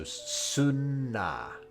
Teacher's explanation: obviously we've got suru, changing the R sound into an N